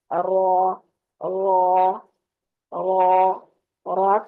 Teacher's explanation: जुबान की नोक की बैक साइड जो पुश्त है, पुश्त को ऊपर के सामने वाले 4 दांतों के मसूड़ों से लगाकर अदा करते हैं